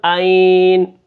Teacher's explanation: نون کے اوپر نون کو ہم ساکن کر دیں گے، یہ ہے وقف بالاسکان، یعنی جو متحرک ہو اس کو ساکن کرنا۔